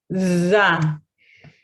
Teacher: the second th sound is produced with the tip of my tongue behind my teeth, not in between my teeth, it's behind my teeth. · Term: dental